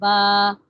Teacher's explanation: با جو ہے یہ دونوں ہونٹوں کو ملا کے پڑھتے ہیں نا